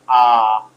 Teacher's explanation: the lips are not rounded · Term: unrounded